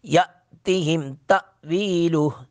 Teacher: یا اور تا دونوں جگہ پر جھٹکا لگائیں گے حمزہ ساکن ہونے کی وجہ سے